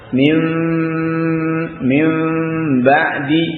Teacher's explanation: Mengganti nun menjadi mim tapi dengan menyembunyikan menyamarkan mimnya. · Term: iqlab